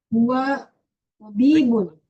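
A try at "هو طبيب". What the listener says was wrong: Tabibun. Masya Allah.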